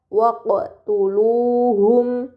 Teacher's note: terdapat huruf qof sukun ini dinamakan qalqalah. Maka huruf tersebut harus dibaca secara memantul.